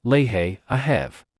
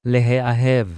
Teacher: you need to mark a slight break between the ha and the aleph